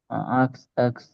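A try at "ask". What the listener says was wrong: আস্ক একটু একটু প্রনাউন্সিয়েশনটা খেয়াল করেন। এটা হচ্ছে আস্ক। আস্ক এরকম, আক্স এরকম না, কটা পরে আসবে না, স্বর আ এর পরে দন্ত দন্ত সটা আসবে আর কি, এরকম আস্ক। আস্ক।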